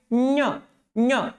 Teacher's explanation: ज्ञ म्हणतात त्याला म्हणजे टाळूला जीभ लागते जिभेचा मधला भाग.